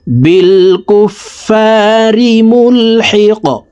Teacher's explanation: কফ কলকলার হরফ উপরের দিকে ধাবিত করে ধাক্কা দিয়ে কফকে সাকিন করতে হবে